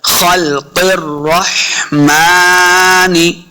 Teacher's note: आगे मीम के ऊपर खड़ी ज़बर है, इसको 2 हरकत हमने लम्बा करना है